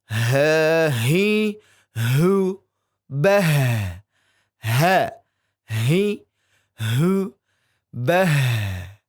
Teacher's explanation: Kemudian huruf ha. dari pangkal tenggorokan